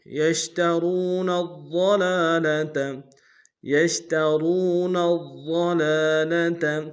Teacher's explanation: میں کھینچیں گے، نون کو آگے ضاد کے سامنے لائیں گے، ضاد کے اوپر تشدید زور دیں گے، ضاد کو موٹا ادا کریں گے